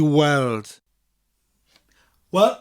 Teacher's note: i said weld without the g and that's because there was a soft mutation after the word e